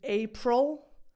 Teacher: The movement that you have to make to produce this L, this English L sound, affects the sound of this schwa.